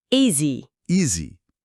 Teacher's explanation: O som do s aqui é mais para um Z, sabe?